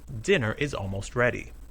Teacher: the verb be is unstressed even when it's a main verb